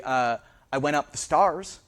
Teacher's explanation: stairs and stars both become stars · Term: Mary merger